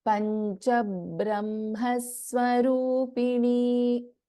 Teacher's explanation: So what happens here is before this Brahma, because of the Dvitvam, there is another B we'll pronounce